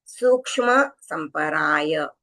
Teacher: ये क्ष यानी क और श मिलके बना है। तो क का उच्चारण भी थोड़ा सुनाई देना चाहिए